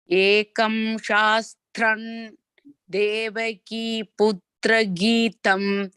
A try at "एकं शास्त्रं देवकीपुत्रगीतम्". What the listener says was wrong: We'll say shastran. We will not use this shastram. Shastran.